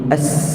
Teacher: Sin ada sifat safir, kita panggil safir ni ada, kita sebut bunyi as.